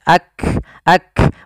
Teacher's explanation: Kaf memiliki sifat yang namanya syiddah juga adanya penahanan di dalam suaranya maka dia kita tahan dulu suaranya baru dialirkan nafasnya